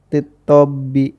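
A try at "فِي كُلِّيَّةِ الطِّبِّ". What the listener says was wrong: Nah, itu tabib ini enggak ada fia'nya.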